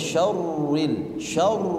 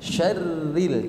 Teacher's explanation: rnya Pak tipis Kenapa tipis karena harakatnya kasr